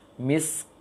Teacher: ada anginnya, harus ada angin, namun tidak kuat, tidak sebesar tidak sebesar angin sin. Khitamuhu misk, misk, kecil anginnya, jangan misk, jangan dibesarkan anginnya.